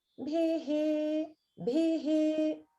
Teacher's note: So here we have the final syllable is ending in visarga, and it has an upper swara. So the bhi part is upper, and then the he comes down to middle.